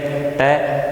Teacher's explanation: ट वर्ग का उच्चारण स्थान होता है मूर्धा। अगर अपन बात करेंगे तो ट वर्ग का अपन उच्चारण करेंगे तो जो मुंह से ध्वनि निकलती है ट, वो जीभ पे आकर के टकराती है, तो यहाँ पे इसका उच्चारण स्थान हो गया मूर्धा।